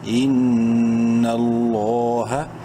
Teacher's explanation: لام کو بولڈ کریں گے, ایک لکھ برابر لمبا بھی کریں گے کھڑی زبر کی وجہ سے